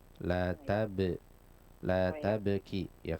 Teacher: lebih bagus tentunya seandainya di sana pastikan ada qalqalah pada bnya